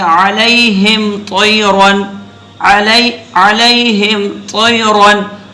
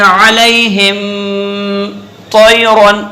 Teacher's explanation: सिर्फ मीम के मखरज को जाहिर करते हुए आगे बढ़ जाना है, यानी मीम पर ठहरना नहीं है, बस में नाक में आवाज़ नहीं ले जानी, यानी एक अलिफ के मिकदार आवाज़ नहीं ले जानी, वगरना इसके अंदर गुन्ने आनी तो हमेशा पाया जाता है, गुन्ने आनी हमेशा पाया जाता है। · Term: मीम का इजहार